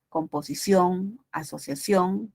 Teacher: son palabras que ubican el acento en la última sílaba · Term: agudas